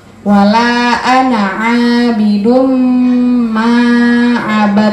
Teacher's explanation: Bidum masuk ke mim dan didengungkan dengan dengan mendengung. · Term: idgham bi gunnah